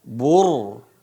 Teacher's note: ro sukun sebelumnya domah ini dibaca tebal